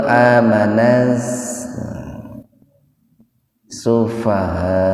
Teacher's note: Nah di sini setelah huruf lam bukan huruf nun, beda dengan yang tadi, yang amananna itu nun. Kalau di sini setelah huruf lam itu sin. Jadi tidak mesti dibaca mendengung, diidgham saja, diidghamkan saja ke huruf sin. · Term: alif lam samsiah